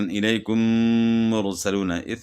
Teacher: ادغام، اخفاء، اظہار۔ تو میم ساکن کے بعد میم آئے تو دونوں کو ملا کر غنہ کے ساتھ مشدد ادا کریں گے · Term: ادغام شفوی